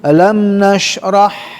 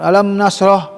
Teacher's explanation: Nah, jadi tapashi melebar dan menghamburkan nafas.